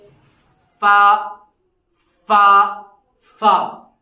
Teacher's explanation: दो चीज इस्तेमाल होंगे, सनाए उलिया का किनारा और नीचे वाले होंठ